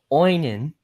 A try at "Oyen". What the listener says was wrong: Stop putting another N in there. Oyen.